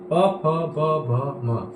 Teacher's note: प वर्ग है जो ओष्ठ से बोले जाते हैं। ये पांचो कहीं ना कहीं स्पर्श होके बोले जाते हैं।